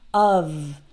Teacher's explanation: in the word of spelled with only one F the F is actually pronounce like V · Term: V sound